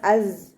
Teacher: അസ് തേനീച്ചയുടെ മൂളുന്നത് പോലെയുള്ള സൗണ്ട് കൊടുക്കുക. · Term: സായുടെ സൗണ്ട്